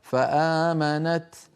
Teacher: لو وقفنا على فآمنت نقف بالتاء فآمنت، لكن لو وصلناها لو أظهرنا نقول فآمنت طا، آمنت طا.